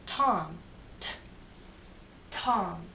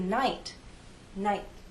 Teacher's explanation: you can feel the puff of air in Tom but when I say good night night I don't really feel